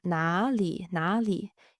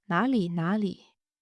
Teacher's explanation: when I say it at a natural speed, then you don't really emphasize the third tone for 哪. So you don't say it like 哪 里, 哪 里.